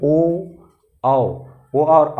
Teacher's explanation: ओ और आओ बोल रहे हैं तो ओंठ गोल हो रहा है ना, तो इसलिए ओ और औ को कंठोष्ठ वर्ग में रखा गया है।